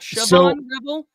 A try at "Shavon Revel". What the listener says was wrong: I have been told the H is silent. that it is Savon.